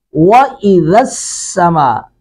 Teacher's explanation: وَإِذَا السَّمَاءُ وَإِذَا السَّمَاء، لال کو نرمی سے ادا کریں گے، سین کو سٹی سے ادا کریں گے، سختی سے